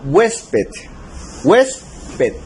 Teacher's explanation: Tenemos que la mayor fuerza de voz está en la penúltima sílaba, hues. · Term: palabras graves